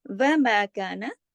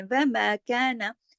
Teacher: الف مدہ ہے کیونکہ الف خود خالی ہے اور اس پہ میم پہ جو زبر ہے اس میم کی آواز کو کھینچ رہا ہے الف جو ہے یہاں مد کا کام کر رہا ہے اب